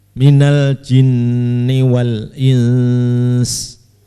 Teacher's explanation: Minal jinni wal ins, harus ada dengungnya, tetap harus ada dengung.